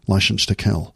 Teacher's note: out a little bit just push them out slightly and then every s sound s becomes a sh sound